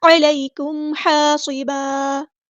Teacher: یا لین آ گئی ہے تو نرمی سے موڑیں گے، مدلین کریں گے. علیکم، عین کو مستحرک میڈل تھروٹ سے ادا کرنا ہے، میم ساکن پر ہم نے اظہار شفوی کرنا ہے، ٹائم نہیں دینا.